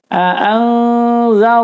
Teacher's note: nun sukun bertemu zal, hukumnya adalah ikhfa, ditahan 4 ketukan dan disamarkan, ada ang sedikitnya ya, ada ang-angnya sedikit maksud saya.